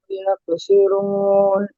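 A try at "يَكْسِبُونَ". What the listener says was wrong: এক সিরুন নেই, এক সিবুন।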